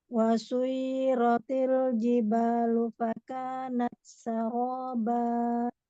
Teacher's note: Jadi ancang-ancang intonasinya mau turun ya ketika mau menyelesaikan bacaannya. Intonasinya nggak naik lagi ya.